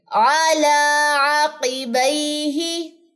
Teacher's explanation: عقی لمبا نہیں کرنا, قاف کی زیر لمبی نہیں کرنی. علی عقبیہ.